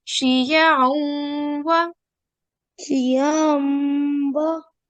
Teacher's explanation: we need to do a 2-second nasal sound, as we need to do a simulation, partial assimilation, as this is the rule with Ghamin Nakis.